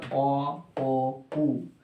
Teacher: এরপরে আছে পশ্চাৎ অ ও উ, এইগুলোকে বলা হয় পশ্চাৎ স্বর